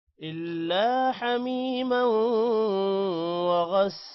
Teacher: وغساقا سین کے بعد الف ہے لمبا کریں گے، قوف کے بعد بھی الف ہے لمبا کریں گے، قوف کو موٹا بھی کرنا ہے